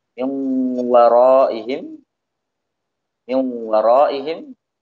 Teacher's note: huruf waw ketika bertemu dengan nun atau tanwin, maka akan ada suara gunnah pada waw tersebut